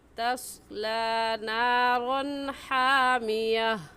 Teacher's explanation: तनवीन के बाद हरूफ हल्की में से हा आ गया है, इसलिए इस तनवीन पर गुन्ना नहीं करेंगे